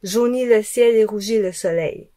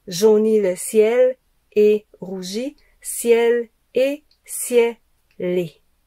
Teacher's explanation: l'enchaînement, c'est au lieu de dire ciel et, on dit ciel-les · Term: enchaînements consonantiques